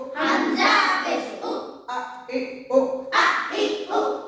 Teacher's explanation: হামজা হলকের শুরু হতে শক্ত ভাবে আদায় হবে। হামজা জবর আ, হামজা জের এ, হামজা পেশ ও, আ ই ও।